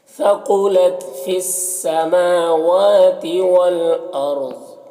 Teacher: میم اور واو دونوں میں کھڑا زبر ہے الف مدہ کی طرح ہوتا ہے · پڑھیں گے ضاد حروف مستعلیہ میں سے اسے پر پڑھیں گے وقف کی صورت میں یہ زیر سکون سے بدل جائے گا